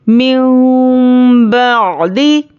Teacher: मिन बअदी, मीम मीम ज़ेर मीम, यहाँ पर इख़लाब का क़ायदा है, देखिए यहाँ पर हम नून को मीम से बदल कर इख्फा और गुन्ने के साथ पढ़ेंगे।